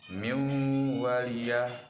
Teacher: Nun mati bertemu dengan huruf waw, maka dibaca dengan lebur dengan dengung. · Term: idgham bigunnah